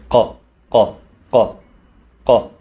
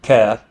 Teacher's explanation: Qaf is pronounced like a K, but from beginning of the throat. From Qaf is from here, qa, qa, qa, qa, and it has a deeper sound.